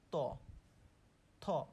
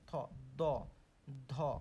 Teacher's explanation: আমাদের জিভটা দাঁতের সাথে লাগছে, দাঁতের অগ্রভাগের সাথে লাগছে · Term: দন্ত ব্যঞ্জন